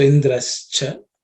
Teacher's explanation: The visarga becomes ish because there is cha.